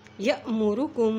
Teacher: हमज़ा के ऊपर जज़ब जब आती है तो वहाँ झटका दे के पढ़ते हैं